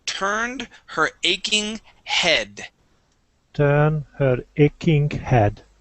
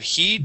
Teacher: the uh EA in this word is a short e instead of heed it is head